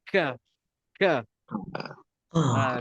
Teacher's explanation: kita lidah belakang tu terangkat sikit ka ka lidah belakang tu dia akan terangkat